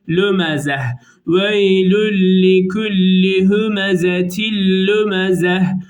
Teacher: Yuvarlak T'nin durulduğu zaman H'ye dönüştüğü